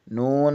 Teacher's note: زبان کے کنارے کی پشت اوپر والے دانتوں کے مسوڑوں سے لگے تو نون ادا ہوتا ہے